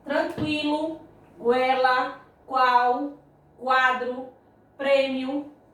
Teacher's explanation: partindo do som mais fraco de uma semivogal e partindo para o som forte de uma vogal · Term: ditongo crescente